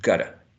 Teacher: what we perceive here is that the reduction of the full u into a reduced vowel sound, schwa